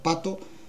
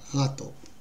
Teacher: el fonema consonántico p es bilabial sordo oclusivo